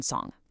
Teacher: The air channels straight through the nose. Fricatives, though, are produced with a gradual release of air.